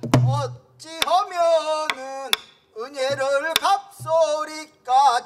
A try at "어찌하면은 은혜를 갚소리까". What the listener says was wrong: 답답해 거기가 그렇게 소리를 안 놓으니까 어찌하면은 은혜를 갚소리까 제발을 덕분에 통촉하시다. 어찌하면은 은혜를 이렇게 가대. 은혜를 이렇게 소리를 말아줘야 하는데 그냥 어찌하면은 은혜를 이렇게 하는 게 재미가 없지. 어찌하면은 은혜를 갚소리까 제발 덕분에 통초거워 팍팍 던져줘야 되는데 안 던져주고 던졌다 뒀다 이걸 안 하니까 그래요. 어찌하면은 은혜를 갚소리까 제발 덕분에 통초거워시다.